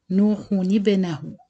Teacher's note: we don't pronounce the tanween sound or the nun saken sound, but we change the nun saken into nun kasra sound.